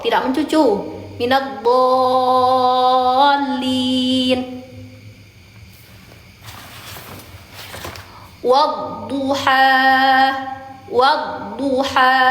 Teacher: Walaupun dia boleh mencucu berharakat boleh mencucu tetap pangkal lidahnya diangkat